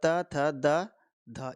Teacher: त वर्ग का उच्चारण स्थान दंत से होता है